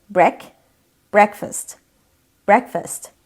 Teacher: tek kelime olduğunda vurgu ilk hecede e sesini tam duyuyorsunuz Break breakfast breakfast şva sesiyle F şva nasıldı neutral pozisyona alıyorsunuz